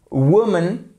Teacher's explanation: le connaître ok woman voyez ce qui se passe ici woman vous avez votre accent tonique sur la première syllabe · Vous avez votre accent tonique sur la première syllabe, c'est pour ça que vous avez une apostrophe ici, c'est un W.